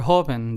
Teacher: there are only two syllables so the syllable that we stress is the first one